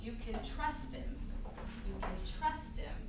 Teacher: in this sentence we are just stressing Trust